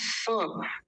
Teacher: जब हम स बोलते हैं स तो हमारे दांत आपस में मिलते हैं और दांतों के बीच में से वायु बाहर आती है